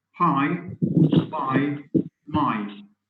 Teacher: And note how the lips come together for the first sound in each of these words. So you have p as in pie, b as in by, and m as in my. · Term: bilabial